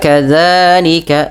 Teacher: ujung lidahnya nempel dan dia dipanjangkan dua harakat karena mad thabi'i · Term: mad tabi'i